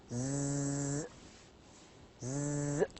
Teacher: sounds like as I said Zee touch your throat and say you feel vibration this vibration indicates that this particular sound is voiced